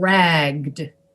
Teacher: example racked which is r-a-c-k-e-d racked and ragged with a g-g-e-d you have to kind of make the g sound longer because you need to have the voice present to pronounce the d